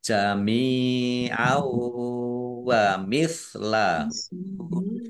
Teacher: Fathah tanwin bertemu dengan huruf wau itu belum bihunna masuk dengan mendengung yaitu mendengung wau. Fathah tanwinnya tidak dibaca, langsung masuk ke huruf wau, ditandai wawunya ada tasdidnya, ditahan biar tampak dengungannya.